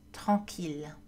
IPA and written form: tʁɑ̃.kil (tranquille)